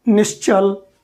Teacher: अब फिर इस स को च के साथ अगर बोलेंगे, च का उच्चारण ताल से होता है, अपने आप वह तालव्य स बन जाएगा